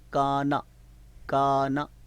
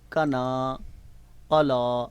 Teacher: کاف کی آواز مد کی الف مدہ کی وجہ سے ڈبل ہے، زیادہ ہے، اور نون کی جو خالی حرکت ہے اس کی زبر کو ہم لمبا نہیں پڑھ رہے، شارٹ پڑھ رہے ہیں۔